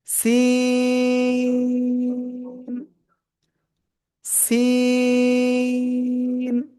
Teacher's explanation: খেয়াল করবেন সবাই, এই যে অক্ষরটা সিন, ওই একই জায়গায় লাগিয়ে চিকুন আওয়াজে স, এরকম একটু আওয়াজ করে আমরা চার আলিফটা নিয়ে উচ্চারণ করব